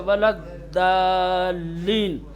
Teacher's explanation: ज़बान के किसी भी एक किनारे को, चाहे दाहिने किनारे को चाहे बाएं किनारे को, ऊपर के दांत से आप मिलाएं तो ज़ाद अदा हो जाएगा। वलद्दालीन, पूरी ज़बान मत हिलाओ, खाली ज़बान थोड़ी सी दाएं ला करके ऊपर के दांत से वलद्दालीन, है ना, वलद्दालीन।